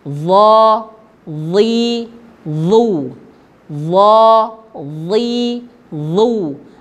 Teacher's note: ujung lidah menyentuh ujung gigi seri atas. Ya, kalau dalam bahasa tajwidnya taraf ma'at taraf lisan ma'at atraf ats-tsanaya al-ulya. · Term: huruf dha